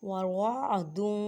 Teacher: عین کو حلق کے درمیان میں سے ادا کریں اور واو کو موٹا پڑھیں.